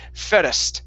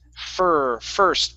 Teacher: here on the word first okay you were saying fairest okay adding an extra vowel sound after the r okay yes it is fur first push the tongue down for